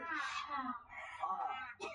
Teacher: এই কণ্ঠনালীর মধ্যাংশ থেকে উচ্চারণ হবে হা